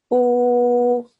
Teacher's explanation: Because the vowel with the sukoon on top has a dhamma just before it, this alif with the dhamma changes from u for 1 second to u for 2 seconds